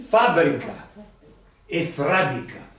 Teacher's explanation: metatesi, che significa cambio di posto di una consonante. Generalmente la R, infatti si chiama anche R ballerina.